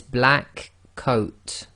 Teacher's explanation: So the same thing's happening there, slight pause actually between the K and the C, but generally we're going directly into the sound of the K into the sound of the C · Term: gemination